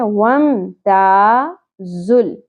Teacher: ता अलिफ हरफ मद्दा एक अलिफ के बराबर खींचना है